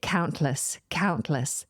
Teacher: But I don't release the T by removing my tongue from the roof of my mouth. I keep the tongue firmly up there and then the T kind of explodes out of the side of my tongue.